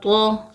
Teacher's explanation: تو حروف مستعلیہ میں سے ہے، اس کو ہم موٹا کر کے پڑھیں گے